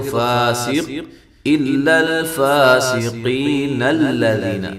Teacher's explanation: نون کو لام سے ڈائریکٹ ملا دیں گے، لام کو موٹا نہیں کریں گے۔